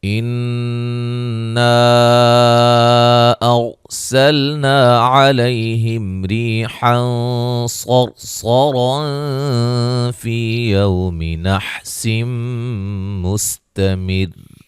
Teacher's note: صاد کو موٹا ادا کریں گے دونوں جگہ، اس طرح را بھی موٹی ہوگی دونوں جگہ · نون مشدد پہ غنہ ہے، الف مدہ ہے، اور الف مدہ کے بعد حمزہ دوسرے کلمہ کے شروع میں آ رہا ہے، لہذا مد ہوگی، مد جائز۔